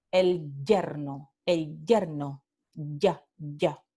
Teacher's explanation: este alófono infiel palatal que puede ser llamado o oclusivo o africado